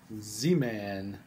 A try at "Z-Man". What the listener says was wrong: Not Duh Man, Z-Man.